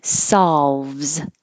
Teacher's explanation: this looks like an o but it sounds like an ah that you have to open your mouth a lot for solves and you do have to make the l solves saul